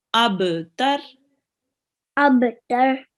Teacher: we have to do a little jerk on the ba.